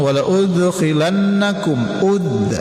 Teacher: qalqalah sughra. Pantulkan huruf dal yang sukun atau mati.